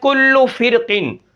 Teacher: کل فرقن کی را میں تفخیم ہوگی